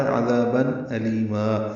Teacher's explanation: لی یا مدہ اور ما الف مدہ مدہ عوض، یہ 2 حرکات لمبے کریں گے اور وقف کر دیں گے